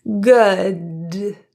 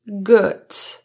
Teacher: The final D in good is a voiced consonant. It means that the vocal folds are actually vibrating. Good. It gives a stronger, more certain feel.